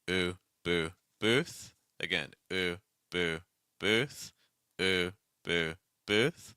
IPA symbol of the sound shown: u